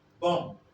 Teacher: So when bilabial nasal appears before a voiced bilabial plosive, this is a voiced bilabial plosive. This plosive will become neutralized, will become entirely unrealized. It will become zero.